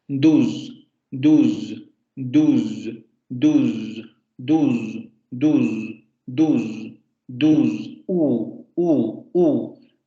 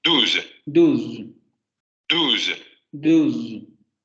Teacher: Parte posterior de la lengua hacia la zona posterior de la boca, cierre de la cavidad oral y labialización. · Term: Posterior cerrada labializada